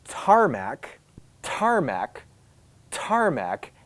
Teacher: Case number 2, when the T starts, when the T is at the beginning of what we call a stressed syllable, when the T is at the beginning of a syllable that is emphasized, it's stressed. This T is accompanied by what we call aspiration.